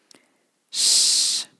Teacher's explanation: It's unvoiced, so it's not zh. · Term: sh sound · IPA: [ʃ]